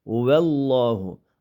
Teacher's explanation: Allah degan lafzi jalala ning lami qalin o'qiladi chunki oldidagi vav zabarlik kelgan.